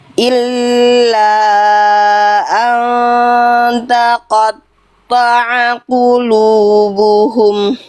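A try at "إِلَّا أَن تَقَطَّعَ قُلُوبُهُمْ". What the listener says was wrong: Tuh, bisa kan? Lanjut.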